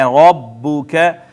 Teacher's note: را کو موٹا کر کے پڑھنا ہے